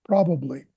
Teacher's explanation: That's got a p and a b sound it. Probably with an emphasis on the first syllable